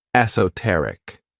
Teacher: the stress is on that third syllable, esoteric. When we describe something as esoteric, we're talking about something that's really understood by a small group of people because they have knowledge or interest in that thing.